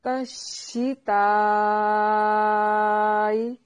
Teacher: ریح، ریح، ہا کو واضح نکالنا ہے اس کے مخرج سے۔ تشتائی، شین کو ادا کرتے ہوئے آواز منہ میں پھیلے گی